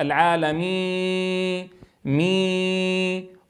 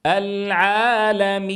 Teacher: الياء لا غنة فيها